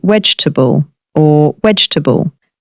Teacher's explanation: the v sound may be softer or more blended with w in some regional Indian accents